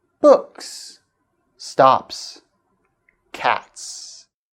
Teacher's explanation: When an s or es follows an unvoiced sound such as t, k, and p, it is pronounced s, which is also an unvoiced sound.